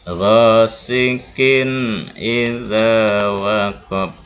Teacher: Pembacaannya izhar, dibaca jelas dan pendek tanpa dengung.